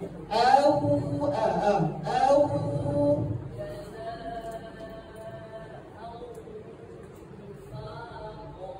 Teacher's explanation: Hamzah keluar daripada pakai kerongkong.